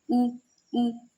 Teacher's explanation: ऊ आपके होठ गोल भी हो रहे हैं और होठों पर आ रहा है, ये बोला जा रहा है होठों से टच, ऊ। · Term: ओष्ठ्य